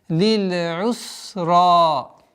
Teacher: Ра твердый. Аннулируется удлинительный алиф. Остается долгота в размере двух огласовок.